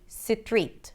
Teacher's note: they might say 'sitreet', turning it into two syllables, and that makes it a little harder to understand.